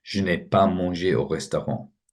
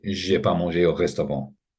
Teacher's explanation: Obviously in spoken French you don't say the ne